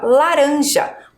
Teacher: Ele está entre dois vogais mas a minha pronúncia minha fala é de um R fraco